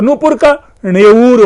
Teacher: अब यहां देखिए जो ये अल्प प्राण कैसे, जैसे नूपुर शब्द है तो नूपुर प यहां पर क्या है, अल्प प्राण है, प और ब इसमें अल्प प्राण है, तो नूपुर का णेऊर हो गया है, पु उ में बदल गया है।